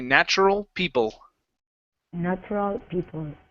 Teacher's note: the l e and the a l at the end of a word sound exactly the same